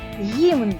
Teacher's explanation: а Скільки приголосних м'яких один - це звук г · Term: м'який